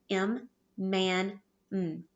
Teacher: because we make them by pushing the air through our nose if you notice your lips are closed on the m